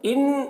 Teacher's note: نون کو نون سے ملا کر غنہ کے ساتھ پڑھیں گے، اس کو ادغام ناقص کہتے ہیں